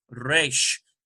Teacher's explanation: Resh does have a little bit of a trill, you'll notice, in the pronunciation.